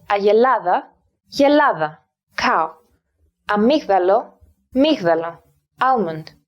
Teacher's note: Elimination is the loss of the initial vowel of a word.